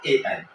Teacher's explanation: ए ऐ होता है दोस्तों कंठ और तालु का। ये क्या रहेगा दोस्तों, कंठ और तालु के संयोग से बोला जाता है दोस्तों। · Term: कंठ तालव्य